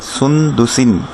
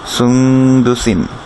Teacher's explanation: স্পষ্ট হলে সুন্দুসিন, কিন্তু আমরা স্পষ্ট করবো না, নুন সাকিন একটু গুন্না করব এবং নুন সাকিনটাকে একটু গোপন করব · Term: ইকফা